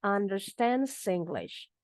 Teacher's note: understands dengan English kita sambung bunyinya